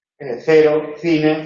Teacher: Ante E, I, es la interdental o la dental fricativa. Se pronuncia con seseo, ¿no?